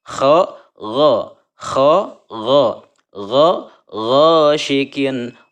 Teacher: mengenai huruf go itu harus ada dahaknya ya, sama seperti huruf kho.